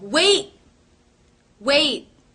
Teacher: you did not hear a t release of the T